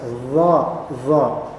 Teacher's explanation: Adapun kalau misalnya dha, maka lidah bagian belakang seperti menekan ke atas.